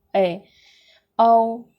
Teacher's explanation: ए बोलेंगे तभी आपका मुंह आधा खुलेगा, पूरा नहीं खुल रहा है। ए औ तभी आपका मुंह आधा खुला, मुंह के आधार पर देख रहे हैं। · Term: अर्ध विपरीत स्वर